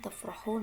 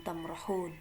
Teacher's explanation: Fa dan mim ini berdekatan dalam makhraj atau pengucapannya.